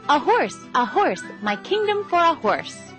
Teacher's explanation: the next syllable a unstressed is followed by horse which is stressed